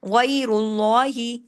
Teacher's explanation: آگے غین بھی حرف ہلکی ہے اس لیے، الہ غیر اللہ، غین کو ہیوی بھی کرنا ہے، یا لین کو پڑھنا ہے، غی، را کو ہیوی بھی پڑھنا ہے خود، اور آگے را کے پیش کے اثر کی وجہ سے اللہ کے نام میں لام کو بھی ہیوی کرنا ہے